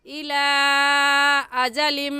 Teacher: से इस मद को कहेंगे मददे मुफ और मददे जायज और इस मद को हम तीन अलिफ के बराबर खींच कर पढ़ेंगे ना इससे कम और ना ही इससे ज्यादा ऐसे पढ़ेंगे इला अजम अलि पर हम गुन्ना करेंगे क्योंकि तनवीन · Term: मद्दे मुनफ़सिल